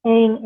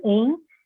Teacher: com a vogal em, que na minha variedade de São Paulo é ditongada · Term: realização ditongada